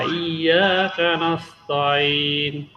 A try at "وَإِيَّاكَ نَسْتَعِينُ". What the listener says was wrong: তাইন, আবার তয়িন বলতেছেন। এখানে তয়িন হবে না, তা জবর তা, ঠিক আছে। ওয়া ইয়াকা নাস্তাইন।